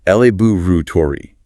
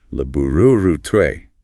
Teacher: AME often stresses the first syllable. Laboratory. BRE frequently stresses the second. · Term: stress shift